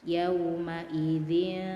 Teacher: ditahan dulu tiga harokat ya